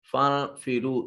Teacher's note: فانفرو نون ساکن کے بعد فا حرف اخفا ہے، نون کو اپنے مخرج میں چھپا کر ادا کریں گے۔ را کے اوپر پیش یعنی ضمہ ہے اور واو ساکن ما قبل مضموم واو مدہ ہوگی اور یہ را مفخم ادا ہوگا۔